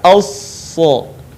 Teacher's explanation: ketika kita melafalkan huruf shad, maka posisi lidah kita atau lisan kita, bagian pangkalnya terangkat, sementara bagian depan pun kemudian menutupi langit-langit.